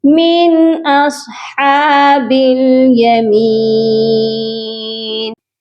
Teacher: ہا کو سینٹر سے حلق کے درمیان والے حصے سے ادا کیا جائے گا